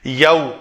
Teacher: واو جو ساکن ہو اس سے پہلے مفتوح حرف آئے تو اس کو واو لین کہتے ہیں، اس کی ادائیگی یو کی طرح ہوگا